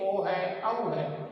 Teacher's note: तो इसको जो ही कुछ स्वर से होते हैं, जैसे ओ है, औ है, इनको अपन बोलते हैं, इनका उच्चारण करते हैं। तो कंठ और ओष्ठ यानी होठों से इसकी आवाज निकलती हुई बाहर आती है, तो इसलिए इसका उच्चारण स्थान क्या हो गया, कंठोष्ठ हो गया।